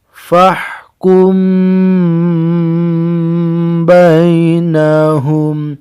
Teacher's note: Cara membaca ikhfa syafawi adalah dengan suara yang samar antara mim dan ba pada bibir, kemudian ditahan kira-kira 2 harokat serta mengeluarkan suara ikhfa dari hidung